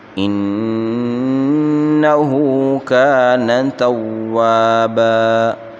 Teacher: انه نون مشدد ہے، اس کو ایک الف کی مقدار اس میں غنہ کریں گے، ہا کے اوپر الٹا پیش ہے، اس کو ایک الف کی مقدار یعنی 1 سیکنڈ کھینچ کر پڑھیں گے۔